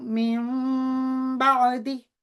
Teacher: غنہ کی صفت بھی پیدا ہو گئی اس میں، اور 2 سیکنڈ کا جو وقت تھا وہ بھی ہم نے اس کو لگایا۔